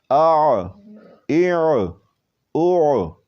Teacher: عین جو ہے وہ وسط حلق سے نکلتا ہے